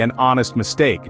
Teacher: we say an hour not an hour another example is honest despite starting with h it sounds like it begins with o